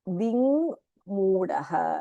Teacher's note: ककारस्थाने ङ इति भवति